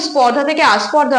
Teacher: যখন ধ্বনিটা পরিবর্তন হয়ে গেছে তখন প্রথমেই একটা নতুন স্বরধ্বনির আগমন হয়েছে সেটা হচ্ছে আ তাহলে এই আ ধ্বনিটার আগমন হয়েছে একেবারে শব্দের প্রথমে তাই এটাকে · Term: আদি সরাগম